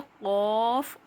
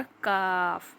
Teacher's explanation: ज़बान का सबसे आखिर का जो हिस्सा है, जब वो तालू के नरम हिस्से से लगेगा तो क़ाफ़ अदा होगा, मुंह भर के पढ़ा जाएगा, मोटा पढ़ा जाएगा। और ज़बान की जड़ को तालू के सख्त हिस्से से लगाएंगे, यानी कि थोड़ी सी आगे की तरफ जब हम ज़बान के जड़ के हिस्से को लगा रहे हैं तो ये काफ़ अदा होगा।